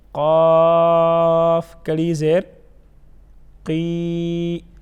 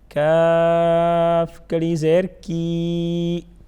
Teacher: جو اپنی اصل حالت ہے قاف کی موٹا پڑھنا اور حروف قلقلہ میں سے بھی ہیں